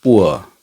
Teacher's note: तो उसका कैसा होगा, पुअर, पी O O R, पुअर। तो उ का अ की तरफ जो ग्लाइडिंग होता है, मूवमेंट होता है हमारे टंग पे